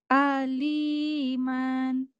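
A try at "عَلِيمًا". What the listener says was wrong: Pendek lagi.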